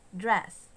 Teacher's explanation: halfway between high and low namely the mid position